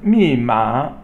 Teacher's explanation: it's Fourth tone and then the next one is M ma me is fourth tone and Ma is third tone